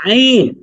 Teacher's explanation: এই আইনের মাখরাজ হচ্ছে গলার মধ্যখান থেকে